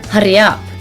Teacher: the r's are rolled quite a lot so they sound stronger and longer than an english accent